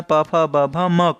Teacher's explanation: आप इसका उच्चारण करेंगे तो आपके होंठ मूव करेंगे, आपके होंठ चलेंगे, इसीलिए इसको ओष्ठ व्यंजन कहा जाता है,